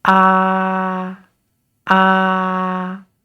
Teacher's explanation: When we pronounce the first tone, remember it is flat and it starts high. That is ah, ah.